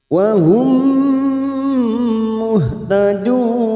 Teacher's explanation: huruf ha ini harus ada tenaga pada saat membunyikan muh. Jangan sampai terdengar ha, jangan muh ya. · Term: huruf ha sukun